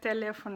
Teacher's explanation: it's pronounced just like it's in English just a little bit closer to the front of your mouth